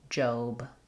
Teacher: In Job, it looks like the word job that has the ah sound, but for the name, it has the O